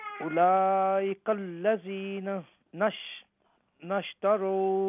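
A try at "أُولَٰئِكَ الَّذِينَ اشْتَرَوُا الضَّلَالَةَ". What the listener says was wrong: Okay, you can't say nash. Because noon belongs to alladhina. So it's alladhina ishtarawu ad-dalalata.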